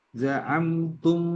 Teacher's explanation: mim sukun ketemu dengan mim. Ini idgham mim ya. Jadi membacanya dengung